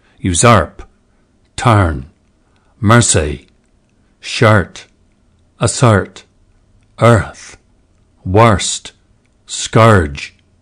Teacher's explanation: Crystal additionally asks for a slightly different vowel shape for the nurse set, slightly more open.